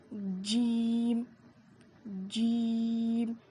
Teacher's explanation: زبان کے بیچ کے حصے سے جیم ادا ہوتا ہے۔ اس کو ہم 5 الف کے برابر کھینچ کر پڑھیں گے۔